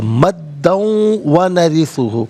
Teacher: واو پر آپ دیکھیے وَنَرِثُ، واو پر تشدید اس لیے ہے کہ اس سے پچھلا جو کلمہ ہے مدہ، مدن، اسے اگر ہم ملا کر پڑھیں گے تو مدن میں دال پر دو زبر کی تنوین، اسے واو کے ساتھ ملا کر واو کی آواز کو ادا کیا جائے گا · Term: یرملون کا قاعدہ